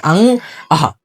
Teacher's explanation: अनुनासिक स्वर, क्योंकि इनका उच्चारण नाक से होता है